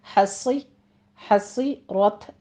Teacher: حصیرت ہے، ہا وسط حلق سے ادا کریں گے، صاد کو سیٹی کی آواز کے ساتھ پور پڑھنا ہے۔ حصی حصی رت را مفخم پڑھتے ہوئے تا پر ہمز کریں گے